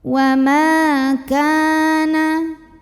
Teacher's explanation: Karena ada alif yang didahului baris fathah, maka cara bacanya mim yang fathah kita panjangkan 2 harokat. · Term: mad tabi'i